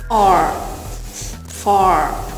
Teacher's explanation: Он глубокий, словно бы застрял где-то в горле. Можете представить, что у вас во рту яйцо, и вы пытаетесь произнести этот звук R.